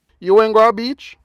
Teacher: Yes or no questions are simple in Patois. You simply raise your intonation. · Notice that there's no question inversion or use of did as there is in English. It's no different from the sentence meaning you went to the beach, except that it has rising intonation.